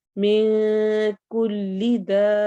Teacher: मिन नून की आवाज को छुपाना है, इख्फा होगा